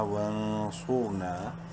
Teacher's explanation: اقدامنا، واو نون زبر ون، الف سائلنٹ ہے، نون ساکن کے بعد صاد حروف حلقی میں سے نہیں ہے، اخفا کریں گے اس نون میں۔ صاد کو منہ بھر کے پڑھیں گے اور را کو بھی منہ بھر کے پڑھیں گے کیونکہ را ساکن سے پہلے صاد کے اوپر پیش ہے۔